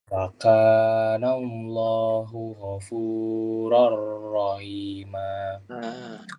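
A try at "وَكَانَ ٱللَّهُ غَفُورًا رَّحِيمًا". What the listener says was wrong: Sekarang perhatikan pada lafaz Allah, Sir. Wa kana Allahu. Tidak masuk ke hidung. Bukan wa kana Allah. Bibirnya tidak usah maju, tapi wa kana Allahu.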